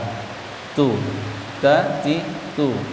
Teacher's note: ujung lidah, pangkal gigi depan atas posisinya